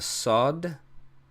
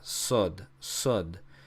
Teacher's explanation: which is a deeper S than a sin